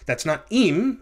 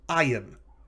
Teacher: So the accent is on the second to last syllable, which is not characteristic of Hebrew. That syllable will have a patach, the short A vowel sound, and then it will be followed by a yod and a hirek and a mem.